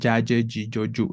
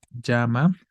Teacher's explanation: Entonces ponemos el dígrafo doble L siempre tendrá un sonido palatal, reitero que es la lengua se pega al paladar